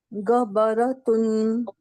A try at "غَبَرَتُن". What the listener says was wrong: غا गाफ की आवाज ना निकालने। अरबी में देखें गाफ नहीं है, गबरातुन,